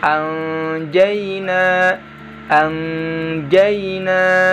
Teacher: nun sukunnya dirubah jadi bunyi eng